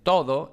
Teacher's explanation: Aquí tenemos en todo esta D aproximante porque va entre vocales